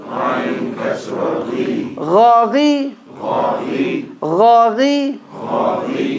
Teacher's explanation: Ghain, there's no click. You should be able to say continuously. Ghain, fatha, gha.